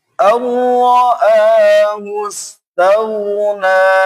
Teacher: Kemudian nunnya panjang, 2 ketukan.